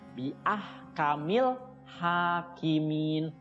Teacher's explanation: Ha itu panjang 2 harokat, ya, namanya mad tabi'i